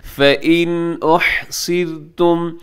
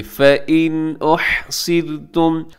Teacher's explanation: फ़इन में नून साकिन के बाद फौरन हमजा आगे, हमजा आपको पता है वो हरूफ हल्की के अंदर शामिल है, तो इसलिए हम यहाँ पे इजहार करेंगे, मतलब गुन्ना नहीं करेंगे और तेजी से पढ़ देंगे